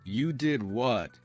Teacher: Rising intonation to show surprise.